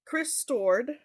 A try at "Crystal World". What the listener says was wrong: there's an L there Chris toured there's an L there